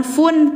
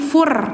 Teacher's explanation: tanwinnya jangan fun tapi fur, karena setelahnya huruf idgham, jadi harus dimasukkan.